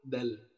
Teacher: dal yang emang ujung lidahnya berada di kulit gusi bagian atas di antara gigi seri, di antara 2 gigi seri.